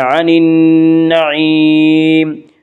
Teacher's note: نون مشدد غنہ ہوگا، غنہ کی مقدار 1 الف ہے